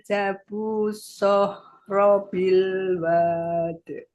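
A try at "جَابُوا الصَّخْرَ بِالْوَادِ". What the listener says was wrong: Janya panjang, Bu. Wanya pendek, janya panjang. Wasamudalladzina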